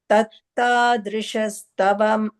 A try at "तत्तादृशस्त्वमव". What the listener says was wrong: No, you're saying ta. It's twa. Tvamava.